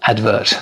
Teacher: The stress is on the first syllable as opposed to advertisement.